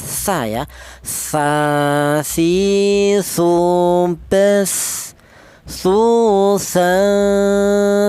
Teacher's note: keluarnya huruf berasal dari ujung lidah menyentuh ujung gigi dari atas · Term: huruf tsa, huruf sa